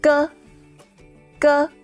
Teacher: they're produced with the coordination of the back of the tongue and the soft palate · The back of your tongue holds against the soft palate, and then your tongue drops suddenly.